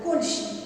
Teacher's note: কেমন সেটা, যেমন ধরো একটা শব্দ দেখো কলসি, এটা আমরা কিভাবে উচ্চারণ করি না হসন্তযোগী, শব্দের মধ্যে যে ল ছিল এটা কলসি, কিন্তু সেটা আমরা কিভাবে উচ্চারণ করি, কিভাবে না হসন্তযোগী উচ্চারণ করি, লয়ের পরে যে অ ছিল সেই অটা কিন্তু লুপ্তভাবে আমরা উচ্চারণ করি, ক লয় হসন্ত দন্তস্বয় হস্যই, এইভাবে আমরা উচ্চারণ করি কলসি। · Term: অ ধ্বনি লুপ্ত